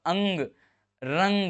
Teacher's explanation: तो नाक पे ज्यादा जोर पड़ रहा है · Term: अनुस्वार